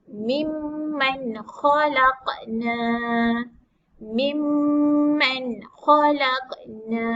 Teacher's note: Dekat mim ni kena baca dengung sebab dia mim syaddah.